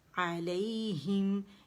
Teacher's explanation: علیہم, علیہم, ہی باریک ہے, اسے موٹا نہیں کرنا اور زیر کے ساتھ پڑھیں گے, ٹھیک ہے. علیہم, ہم پہ میم پہ جائیں گے اور ایک کاؤنٹ کے لیے آواز چلے گی